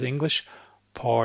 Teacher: you to say by accident see how that sounds English par it sounds English because I'm raising the tip of my tongue up to make the English r